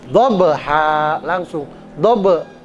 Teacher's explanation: Jadi qalqalah sugro dia qalqalah suaranya ada e-nya tapi ringan aja. Sugro itu kecil atau ringan, ya.